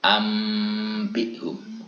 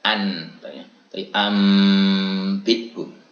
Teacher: Nah, ketika ada tanda mim kecil itu menunjukkan bahwa kita harus membunyikan nun itu dengan bunyi mim ya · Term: iklab